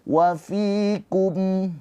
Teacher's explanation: Sebabnya ketemu iya sukun. Dia fi-nya kan harokatnya kasroh, ketemu iya sukun jadinya mad tabi'i, panjangnya 2 harokat fi-nya.